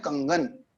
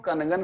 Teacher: जैसे मान लीजिए कंगन शब्द लिया अपन ने, तो क के ऊपर अनुस्वार है, तो क के ऊपर जो अनुस्वार है तो अब इसका जो उच्चारण होगा वो क वर्ग का जो 5वां अक्षर है उसके आधार पर होगा, इसीलिए हम बोलते हैं कंगन।